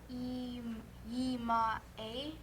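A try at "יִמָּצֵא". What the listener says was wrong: Try it again with the zadi. Yimatse.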